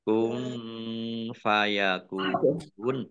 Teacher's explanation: nun sukun bertemu dengan huruf Fa bacaan Ikhfa dibaca samar-samar